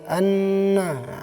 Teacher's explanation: gunnah musyaddah dibaca dengan dengung